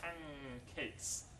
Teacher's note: So the alveolar N changes to a velar sound. Both are nasal, but the place of assimilation, the place of articulation is different.